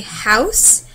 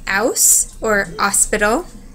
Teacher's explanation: you can have the H or no H sound some people say house others may say house or Hospital there